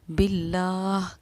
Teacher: جب لفظ اللہ کے لام سے پہلے زیر آتا ہے تو ہم لفظ اللہ کے لام کو باریک پڑھتے ہیں